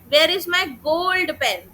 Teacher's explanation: तो मैं गोल्ड word में स्ट्रेस लगा रही हूं। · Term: सेंटेंस स्ट्रेस